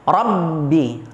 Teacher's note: RO nya di situ hukumnya Apa hukumnya ro tafkhim dibaca tebal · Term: ra tafkhim